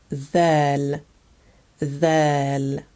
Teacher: you're using the tip of your tongue to pronounce the sound and to differentiate it from the D dome sound